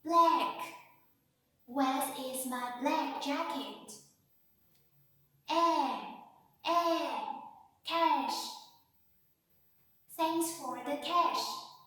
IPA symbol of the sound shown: æ